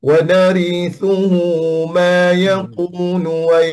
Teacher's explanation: Ada takrir maksudnya getaran lidah.